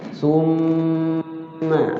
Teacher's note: Inna summa, cara bacanya itu wajib gunnahnya, maksudnya di huruf mimnya itu jangan buru-buru, ditahan ya, digunnah dilakukan